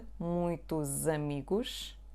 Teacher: Pay attention to the connection there. The letter S becomes Z